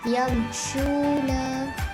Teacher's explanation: Huruf shin yamshuna, iaitu mim sukun bertemu dengan huruf shin, iaitu bacaan izhar syafawi, dibaca dengan jelas tanpa dengung